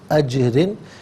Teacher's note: را کے نیچے دو زیر کی ترمیم ہے تو باریک کر کے پڑھیں گے، اور وقف کی صورت میں اجر یعنی را ساکن ہوگا، ما قبل جیم بھی ساکن ہے، پھر اس کا ما قبل حمزہ پر زبر ہے، تو وقف کی صورت میں را ساکن کو پر کر کے پڑھا جائے گا۔